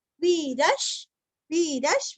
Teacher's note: वी दीर्घ विसर्ग का हल्का सा श